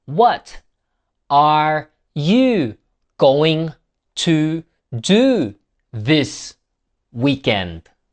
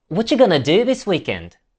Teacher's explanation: What are you became whatcha. Going to became gonna. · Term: connected speech